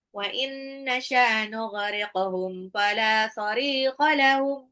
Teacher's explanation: Wa inna nun sukun ketemu nun adalah idgham bil gunnah ditahan ya 2 sampai 3 harokat. Nughriqahum qafnya pantul qalqalah. Fala lamnya matabi'i sarikha ra-nya matabi'i 2 harokat.